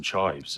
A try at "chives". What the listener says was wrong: fully two syllables when you say that.